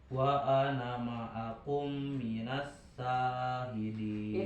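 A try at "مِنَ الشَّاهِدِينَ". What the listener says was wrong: itu sin besar ya jadi ada tapasy minas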